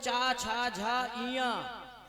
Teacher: ये जो 5 जो हैं ये तालु है, तालव्य। ये तालु से बोले जाते हैं।